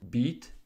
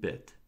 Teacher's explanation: contrasted by the vowel sounds being tense in the first words but legs in the second words fouls there are located at · linguists distinguish E and E by the tenseness · beat and bit, peach and pitch are contrasted by the vowel sounds being tense in the first words, but lax in the second words. Vowels that are located at the peripheral regions of the vowel diagram, except for A, are called tense vowels, because the pronunciation of these sounds requires some muscular effort.